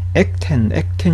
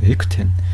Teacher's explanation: 에크텐. 예, 이 크가 거센 소리이기 때문에 무성음 끄처럼 발음되지 않아요. 크도 거센 소리고 트도 거센 소리이기 때문에 에크텐 이렇게 발음이 되죠.